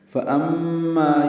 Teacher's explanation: ام میں میم مشدد پہ غنہ ہے